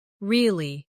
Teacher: With a falling tone to show you don't believe someone.